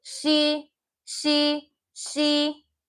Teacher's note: This S now doesn't have s, it has a sh sound.